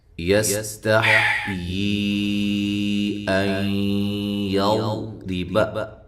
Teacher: سین کو سیٹی کے ساتھ بغیر ہلائے ادا کرنا ہے۔ تا کو باریک، ہا کو واضح نکالنا ہے۔